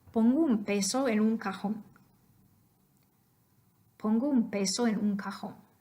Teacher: that N comes before the bilabial P, so that would be an M.